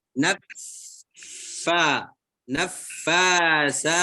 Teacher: Ujung gigi seri atas bertemu dengan perut bibir bawah bagian dalam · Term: makhraj fa